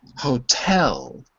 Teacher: you do pronounce the h yes but the stress is on the second syllable